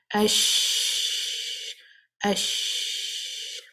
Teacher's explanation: the sheen is again from the middle of the tongue, coming close to the hard palate · When you say the sheen with the sukoon, you'll see the sound is continuing. It's not blocked. It's not stopping. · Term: rekhawah